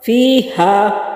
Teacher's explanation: یا ساکن سے پہلے لفظ کے نیچے زیر ہے تو یہ یا مدہ ہے، اور یا مدہ کو کھینچنے کی مقدار جو ہے وہ ایک حرکت کے برابر ہے